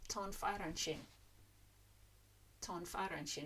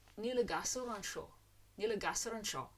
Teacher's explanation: Now I'm separating the words out there artificially so you can hear what I mean. We drop the N because it's between consonants